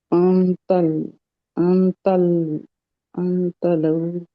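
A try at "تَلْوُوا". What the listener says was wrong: ता जबर लाम जज्म तल, वा उल्टा पेश मद, वू, वाव नहीं होगा ना, वू होगा। तल वू होगा। तलऊ तब होता जब वाव के ऊपर जज्म होती, तो फिर ये मदलीन बन जाता। लेकिन तब फिर भी लीन नहीं बनना था, लाम के ऊपर जबर आनी जरूरी थी तलऊ बनने में।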